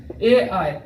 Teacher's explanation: कंठ तालु के मदद से ए आई बोले जाते हैं।